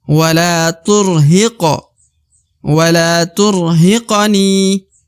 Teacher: Wala turhiqo, kemudian di depan huruf hi terdapat ko atau huruf qaf berharokat sukun, maka huruf qaf harus dibaca pantul karena huruf qaf adalah salah satu daripada huruf qalqalah